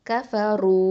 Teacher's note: அடுத்தது காஃப் ஃபத்ஹா க, ஃப ஃபத்ஹா ஃப, கஃப, ரா தொம்மா வாவ் சுக்கூன் ரூ, கஃபரூ. இது வந்து வாவுல் மத்து 2 ஹரக்கத்தை நீட்டணும்.